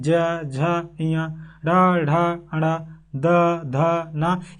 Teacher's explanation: देखिए कंठ में एक गूंज आ रही है · एक गूंज, एक सरसराहट आ रही है, झंकार टाइप में आ रही है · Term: घोष